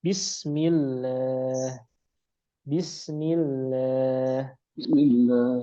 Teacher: ketika lafzul jalalah Allah sebelumnya kasrah. Maka ini tipis. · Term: lam tipis